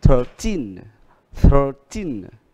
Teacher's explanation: Y à, đuôi 13. Thì ở đây từ số 13 cho đến số 19 đều nhấn, các con số này được nhấn ở gì? Âm thứ hai. Đó là âm y.